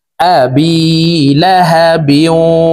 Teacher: বা ওয়াও 2 জের বিও, ইদগামে বা গুন্নাহ। তানউইনের পরে ইদগামে বা গুন্নার 4 হরফের একটি হরফ ওয়াও আসছে, এই কারণে এই তানউইন ওয়ালা বাটি তাসদিদ ওয়ালা ওয়ার সাথে গুন্নার সহিত মিলাইয়া পড়ব।